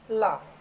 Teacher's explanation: वह वर्ण जिसके उच्चारण में जीवा मसूड़ों को छूती है। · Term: पार्श्विक व्यंजन